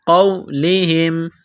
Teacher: قاف کو موٹا کرنا ہے